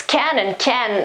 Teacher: the final T isn't pronounced most of the times